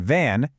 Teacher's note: Now, just turn on your voice. The V in van creates that same friction plus a vibration. It's voiced.